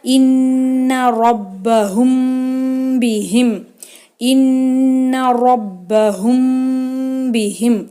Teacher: சுக்குன் பெற்ற மீமிற்கு பின் பா வருமேயானால் குன்னாவுடன் இஹ்ஃபா, அதாவது மீமின் சப்தத்தை மூக்கில் மறைத்து செய்து உச்சரிக்க வேண்டும் · நூன் மேலே தஷ்ஜீத் வந்திருக்கு, அதையும் நம்ம குன்னா செஞ்சு ஓதணும். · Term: இஹ்ஃபா ஷஃபவி